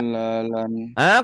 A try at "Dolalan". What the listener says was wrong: Kodanya panjang. Ini salah ya. Penulisan ini panjang nggak ngaruh. Kalau panjang itu kalau ada alifnya aja.